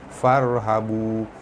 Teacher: Wa iyaya baris atas bertemu alif mad asli panjang 2 harakat. Farhabu ra yang mati sebelum dia ada huruf baris atas, ra dibaca tebal